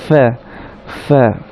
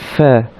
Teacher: ফার উচ্চারণ স্থান আমরা বলেছিলাম যে উপরের দাঁতের আগা সেটা নিচের ঠোঁটের মাঝখানের সাথে লেগে